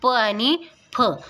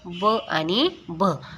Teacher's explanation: प वर्गामधील कठोर व्यंजन आहेत आपली प आणि फ आणि मृदू व्यंजन आहेत आपले ब आणि भ